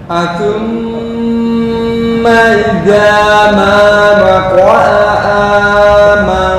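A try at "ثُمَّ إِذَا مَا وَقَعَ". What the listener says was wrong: Kepanjangan. Hey, ini hanya dua harokat. Idza, bukan idza. Idza. Makhraj ya, kembali ke makhraj dulu. Za. Ini za. Zal. Ujung lidah dengan ujung gigi. Az. Iza. Bukan da. Za.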